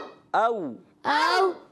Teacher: حمزہ کو جو ادا کریں گے وہ تحقیق سے ادا کریں گے اور واو لین کو نرمی سے پڑھیں گے واو میں ہونٹوں کو گول بھی کریں گے